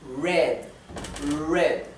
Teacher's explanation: la r inglesa no es una r dental como la del español no es no se pronuncia enrollando de la lengua hacia atrás